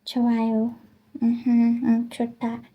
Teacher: The 존댓말, like the polite present, form, and remember when, because usually the H, this is H, but the H is usually like silent, because it's pronounced 좋아요